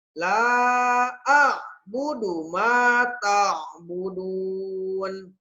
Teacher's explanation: A bukan a, tapi dari hamzah ke ain ke a